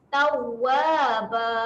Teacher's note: Jadi kalau kita nak wakaf kat sini, kita ikut saja cara tanwin yang sama dengan nombor 3 ni lah. Jadi kita akan matikan dengan panjang saja sebanyak 2 harakat.